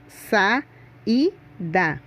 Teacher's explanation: chamamos essa classificação de hiato veja outro exemplo a palavra saída as duas vogais tem pronúncia forte por isso elas ficam em sílabas separadas